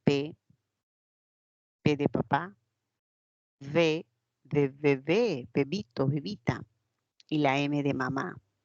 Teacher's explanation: Cuando el labio inferior se acerca al labio superior, se va a producir un sonido bilabial.